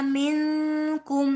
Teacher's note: نون ساکن کے بعد کاف ہے، یہاں پہ اخفا ہوگا